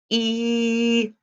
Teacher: when you make the e sound your tongue is pulled back and the sides are touching the inside of your upper teeth try it E so when you pull that back you're smiling